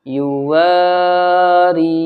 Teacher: الف سے پہلے واو کے اوپر زبر آ گیا تو واو یہاں پر اب کھینچے گا